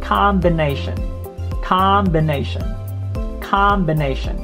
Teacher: this o here sounds like a letter a so you drop your jaw